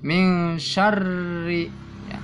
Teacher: Ro kasro hukumnya ro tarkik, artinya tipis.